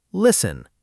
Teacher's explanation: Listen is spelled l i s t e n, but we say listen. The T just vanishes.